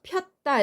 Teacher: 단모음 이와 단모음 어가 만나서 축약했을 때 여가 돼요. 폈다 이렇게 되죠. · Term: 이중모음